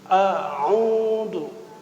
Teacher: Hamzah di aqsal halqi, pangkal tenggorokan, dan sifatnya jelas dia adalah syiddah. Sedangkan huruf ain itu adalah wastul halqi, tengah tenggorokan, rakhawah. Ya, tengah tenggorokan, beda posisi, beda sifat, beda karakter.